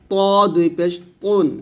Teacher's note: তটা বলতে হবে মোটা করে